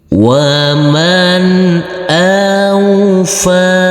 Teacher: huruf fa ini kita baca panjang dengan panjang 2 harokat